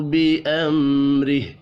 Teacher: میم ساکن کے بعد را ہے، اظہار شفی ہوگا، غنہ نہیں ہوگا ، را کو زیر کی وجہ سے باریک پڑھیں گے، وف